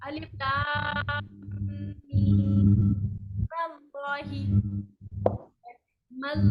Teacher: میم کو آگے اللہ سے جوڑ دیں گے، میم پر زبر دیں گے